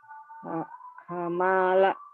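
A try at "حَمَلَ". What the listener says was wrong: Pendek. Hamala.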